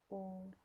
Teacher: Dhammah ini termasuk juga vokal tinggi, tetapi vokal tinggi yang berada di belakang lidah. Ketika mengucapkannya yaitu bibir membentuk semi bundar seperti u tuh.